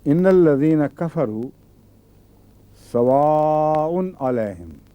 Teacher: واء حمزہ آیا ہے نا آ کے بعد، اس لیے اس کو لمبا کرنا ہے